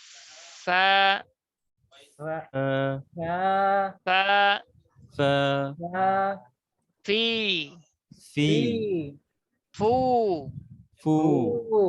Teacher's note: ফ উচ্চারণ করতে গেলে উপরে সামনের দাঁতই লাগবে সাইডের দাঁত না হ্যাঁ খেয়াল করেন উপরের দাঁত নিচের ঠোঁট বাতাস চালু ফা এটুকু